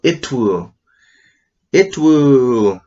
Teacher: Oh, it's a glottal T